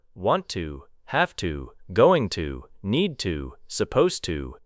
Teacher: Notice how to often becomes te.